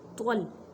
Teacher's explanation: इस पे ख्याल रखें कि ता की आवाज़ ना आए, त्वल मोटा करके पढ़ें। ता और त्वा में फ़र्क करें क्योंकि ता एक अलग हरफ है और त्वा अलग हरफ है।